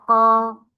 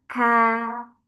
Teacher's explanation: masuk ke bagian pangkal lidah Paling dalam ada ko ah depan sedikit ka ya punya percikan udara